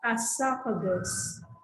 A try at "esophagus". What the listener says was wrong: Okay, it's not juice, okay? Goose.